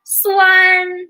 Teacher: it's a high tone the first one